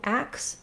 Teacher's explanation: some native speakers saying ax instead of ask. That is part of a dialect of American English.